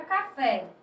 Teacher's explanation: a última sílaba é tônica, ou seja, é a sílaba mais forte de uma palavra, aquela que você pronuncia com mais intensidade, isto é, com mais força. · Observe que a sílaba tônica é o fé, isto é a última sílaba. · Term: Oxítonas